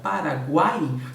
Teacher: o que ocorre na palavra paraguaio nós teremos um triton boné uma fraca uma forte e uma fraca essa é a sequência do tritongo